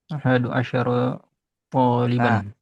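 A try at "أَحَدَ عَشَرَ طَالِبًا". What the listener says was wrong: Perhatikan jangan ahadu, tapi ahada di fathah kedua-duanya. Dibaca fathah kedua-duanya ya. Ahada asyara taliban fathah dua-duanya. Ahada dan asyara.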